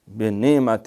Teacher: یعنی نہ یہ حمزہ نہیں اس کو بنانا، یہ عین ہے